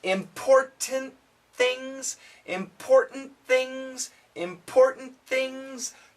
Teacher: The t combines with the th.